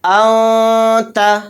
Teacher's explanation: صرف ناک میں آواز کو ہمیں چھپانا ہے۔ اس طرح سے چھپائیں گے، انت، ان نہیں کہیں گے، یعنی نون کو ظاہر نہیں کرنا ہے۔ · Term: اخفا